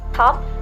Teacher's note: In the word top, we pronounce t with the puff of air and in the strong way. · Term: aspirated